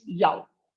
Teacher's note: Yao is grave tone, level tone, which means finish.